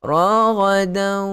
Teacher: Okey, kena ada bunyi ghunnah. Raghadan naikkan ke hidung. Ghunnah itu keluar daripada hidung.